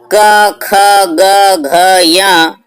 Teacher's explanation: क ख ग घ य ये 5 वर्ण कंठ से उच्चारित होते हैं